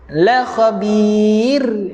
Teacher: kita wakafkan dengan sifat nipis pada ra khabir. Nipiskan, tak boleh tebal dia tuan-tuan.